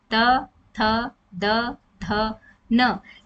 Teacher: हमारी जो जीभ है वह हमारे दांतों को छूती है हमारे दांतों को स्पर्श करती है तो इन्हें क्या कहा जाता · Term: दंत व्यंजन, दंत्य व्यंजन